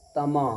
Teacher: अलिफ मद्दा होगा इसलिए कि अलिफ से पहले मीम के ऊपर ज़बर है, इसलिए अलिफ मद्दा होगा। अलिफ मद्दा को एक अलिफ के बराबर खींच करके अदा करेंगे